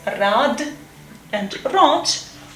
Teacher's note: these voiced obstruents become voiceless when they occur at the end of the word